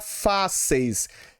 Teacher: ele não sai pela cavidade do nariz, sai simplesmente pela cavidade oral · Um ditongo oral é aquele em que a pronúncia das vogais e semivogais se dá exclusivamente pela boca, sem qualquer nasalização